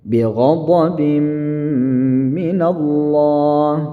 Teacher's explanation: ketika tanwin atau kasratain bertemu dengan huruf mim maka dia didengungkan ya. Idgham bi gunnah.